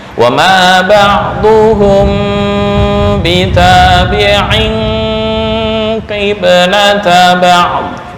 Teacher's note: Nah, mim mati bertemu ba ikhfa syafawi dengung, tanwin bertemu qaf ikhfa dengung. Dengung itu ditekan 2 harokat.